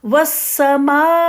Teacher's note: حمزہ کے مخرج پہ جا کے ادا کریں، اور میم کی مد کو 4 کاؤنٹ کر دیں گی، آپ 4 کاؤنٹ کے برابر وقت دیں گی۔